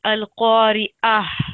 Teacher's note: when we stop on ta, it changes into a ha